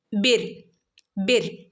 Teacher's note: സുക്കൂനുള്ള റന്റെ മുമ്പുള്ള അക്ഷരത്തിന് കെസ്റർ വന്നാൽ റനെ എന്ത് ചെയ്യണം ലൈറ്റ് ആക്കി ഉച്ചരിക്കണം · വസ് ബിർ, ഇവിടെ റോ സുക്കൂനുള്ള റോയിൻ്റെ മുമ്പേ ഉള്ള അക്ഷരം കെസ്ര വന്നാൽ, സുക്കൂനുള്ള റോയിൻ്റെ മുമ്പേ ഉള്ള അക്ഷരത്തിന് കെസ്ര വന്നാൽ റോയിനെ എന്ത് ചെയ്യണം? ലൈറ്റാക്കി ഉച്ചരിക്കണം. ബിർ ബിർ. ഓക്കെ, ഇങ്ങനെ ലൈറ്റാക്കി ഉച്ചരിക്കണം കേട്ടോ.